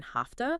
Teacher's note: simply flip a voiced consonant to an unvoiced one